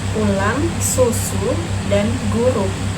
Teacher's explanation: lidah ditarik ke belakang dan dinaikkan, bibir membulat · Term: Vokal U